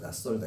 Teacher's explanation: 그 디귿 뒤에 시옷이 바뀌어서 시옷이 쌍시옷으로 바뀌는 거야. 낯설다 이렇게 바뀌는 거야. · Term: 된소리 되기